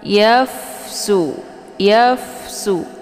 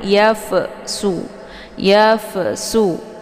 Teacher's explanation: atas ya dan Fa Ini adalah sifatnya Hamas maka ketika ada Hamas itu dibunyikan anginnya secara samar-samar jadi tidak begitu jelas yafsu yafsu jadi Fa ini jangan dilepaskan ya tapi dialirkan sehingga